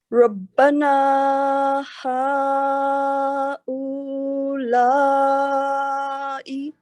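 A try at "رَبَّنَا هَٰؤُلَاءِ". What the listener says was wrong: او نہیں ہوگا واؤ پر جزم نہیں ہے، حمزہ صرف بولے گی، حمزہ پر دمہ جو او. اولا ہوگا اولا. لائی پھر لائی لائی لا کٹ ای لائی. ربنا ہؤلاء.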